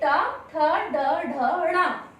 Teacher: इनका उच्चारण स्थान मूर्धा है। जब इन वर्णों का हम उच्चारण करते हैं तो मूर्धा से स्पर्श करते हुए इन शब्दों का उच्चारण होता है। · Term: टा वर्ग